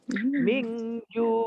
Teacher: Ifa hakiki. Nun mati bertemu dengan jim. Dengan menyembunyikan bunyi nun beserta dengung.